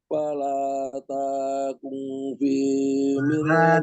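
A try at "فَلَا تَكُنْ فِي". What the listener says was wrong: takung. Lanjut Pak, lambat taknya panjangan. Takung langsung saja. Fala takung, taku langsung. Takung.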